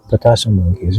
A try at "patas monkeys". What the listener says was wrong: Like patas, not patasa, because there's no A at the end. It's patas monkeys, yeah.